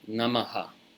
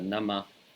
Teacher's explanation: But if the visarga is at the end of a word where the preceding vowel is different, then you echo that vowel, you see, because visarga means, in this context of the Sanskrit language, it means echo the preceding vowel with an intervening H sound